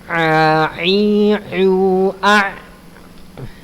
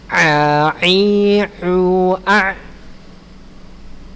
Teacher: Ingat huruf ain ada di tenggorokan tengah.